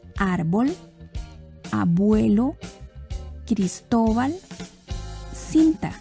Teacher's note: el acento en estas palabras está antes de la última sílaba es decir en la penúltima sílaba las palabras que llevan el acento en la penúltima sílaba se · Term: graves